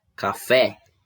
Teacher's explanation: na palavra café, a sílaba tônica é o fé. É a sílaba que foi pronunciada com mais força, com mais intensidade. E estas com menor intensidade são chamadas de átonas.